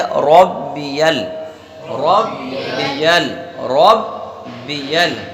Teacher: یا پر زبر ہے تو اسے بھی بغیر کھینچے پڑھیں گے، اور یا کو اگلے والے العظیم کے لام سے ملا دیں گے۔